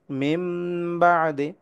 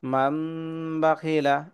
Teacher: পরে ইকলাবের হরফ বা আসার কারণে এখন এটার উচ্চারণ মিন না হয়ে হবে মিম।